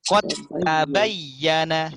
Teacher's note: Maka langsung masuk ke ta, dalnya ini macam hilang.